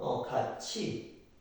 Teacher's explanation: 티귿이 치읓으로 바뀐 거죠. 국외음화 일어났죠. 그 다음에 그는 그 사실을 낱낱이 밝혔다.